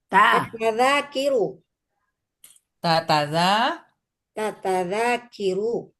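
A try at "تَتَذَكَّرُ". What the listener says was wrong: Kan itu kara Ibu, jangan ki.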